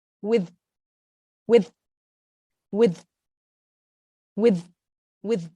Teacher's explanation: you're kind of like pronouncing the th and then you're blocking the th by pressing it against the teeth pressing the tongue against the teeth with with with with with